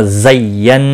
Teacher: नून मुशद्दद पर गुन्ना होगा